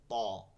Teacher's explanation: ত হচ্ছে পুরো মোটা করে ত, গোড়া থেকে একদম তালু পর্যন্ত ত